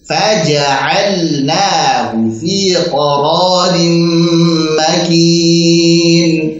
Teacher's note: Ja'alna, lam sukun ketemu nun di sini dibaca jelas, sehingga kita harus semangat di dalam membaca sukunnya.